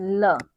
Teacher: ल हमारी जीवा के बगल से इसकी वायु बाहर निकल जाती है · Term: पाश्विक, पार्श्विक